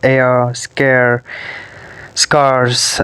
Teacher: these diphthongs begin with the same vowel sound as a of men